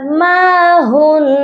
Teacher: تو ہم غنہ کریں گے، اس کے بعد ما ہن، نون مشدد ہے، یہاں پر نون مشدد کا غنہ ہوگا